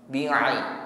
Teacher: Pastikan pengucapan ain dengan sifat tawassut lunak ya, pengucapannya bukan bi'i. Menekan pada wastul halqi, tenggorokan bagian tengah, lunak saja.